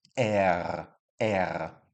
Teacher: in German, it comes from the back of your throat